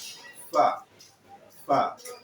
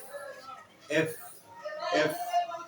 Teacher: आपके नीचे की होंठ ऊपर के दांत तक केवल जानी चाहिए, यानी दोनों होंठ नहीं सटनी चाहिए। रिमेम्बर, दोनों होंठ सटाएंगे तो फिर फा जैसा साउंड निकलेगा, तो नीचे की होंठ ऊपर के दांत तक जाएगी और फिर वहां से हवा भी निकलती है।